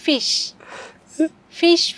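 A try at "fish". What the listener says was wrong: মুখটা একটু বেশি লাগান, দাঁত তো সব এক জায়গায় থাকে। হা কইরা কথা বলেন, হা কইরা।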